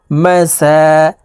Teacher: খারা জবর থাকার কারণে এই সিনকে এক আলিফ টেনে পড়তে হবে